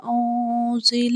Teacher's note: الف لمبی پڑی جائے گی، او میں ہم اخفا کریں گے، نون ساکن کی آواز کو ہم ناک میں چھپائیں گے